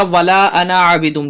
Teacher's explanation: ولا اس کو کھینچیں گے، انا کو جلدی پڑھیں گے، یہاں پر کھینچیں گے نہیں، اور عابدم دال کو میم سے ملائیں گے، عابدم ما عبدتم، ٹھیک ہے، با کو تا سے ملائیں گے عبدتم، اور ولا انتم عابدون ما اعبد جس طرح پیچھے پڑھا تھا اسی طریقے سے یہاں پر اس کو پڑھنا ہے۔